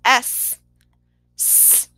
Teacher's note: the s no vibration it is an unvoiced consonant sound